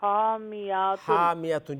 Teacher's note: ہا وسط حلق سے نکالے نا